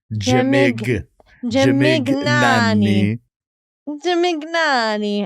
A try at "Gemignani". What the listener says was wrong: But you don't say Gemig, you say Gemignani.